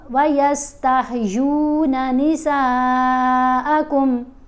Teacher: یہاں نون کے اوپر زبر ہے، ساتھ مد ہے، مد متصل ہے، اس مد کو ہم نے 5 الف جتنا لمبا پڑھنا ہے